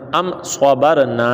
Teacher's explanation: تو اب صاد انہوں نے بتایا کہ میم ساکن کے بعد میم اور با کے علاوہ کوئی بھی حرف آ جائے، یہ کوئی بھی میں صاد آ گیا، تو جب میم ساکن کے بعد صاد آ گیا تو یہاں پر ہم نے اظہار شفوی کرنا ہے، یعنی غنہ ہم نے نہیں کرنا